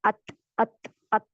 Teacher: हल्की सी इसमें से हवा बाहर आती है हमस की वजह से